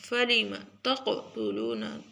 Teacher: قاف موٹا اور کاف کے قلقلہ، کاف کے اوپر قلقلہ